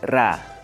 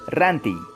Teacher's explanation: Para producir este consonante, la punta de la lengua se pone en contacto con la región alveolar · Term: Consonantes alveolares